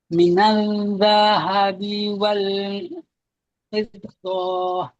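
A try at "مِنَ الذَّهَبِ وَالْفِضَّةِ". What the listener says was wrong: Kemaskan dekat minal. Dia masuk nal. N-A-Z. Bukan N-A-L. Masuk Z terus. Cuma bunyi Z dia jangan bunyi macam Z bahasa Melayu. Sebab ini huruf zal, huruf jali lidah. Bunyi dia lembut je.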